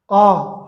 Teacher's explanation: विवृत खुला हुआ, पूरा खुला हुआ। आ, हम आ का उच्चारण करते हैं तो मुंह पूरा खुला हुआ होता है